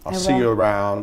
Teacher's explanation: see you around and since the i in isle is unstressed the vowel actually reduces to a more quick and neutral pronunciation sounding a lot more like awah I'll see you around the